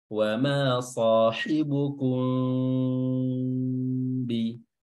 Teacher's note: metode furjah atau menyisakan celah kecil antara kedua bibir dan tidak mempertemukannya